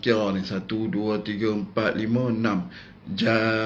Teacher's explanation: panjang dulu enam tekan sikit dan dengung di hujung jan